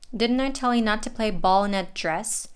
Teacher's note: the stressed words are didn't tell not and play